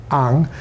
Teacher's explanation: Sometimes you get a glottal stop plus a full vowel plus a nasal consonant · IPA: ʔaŋ-